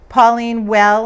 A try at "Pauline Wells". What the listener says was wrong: Pauline Wells? You mean Pauline Wells? Well, I thought you said well.